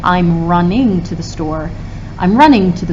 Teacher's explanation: ing is so unstressed that a lot of times we don't even say it completely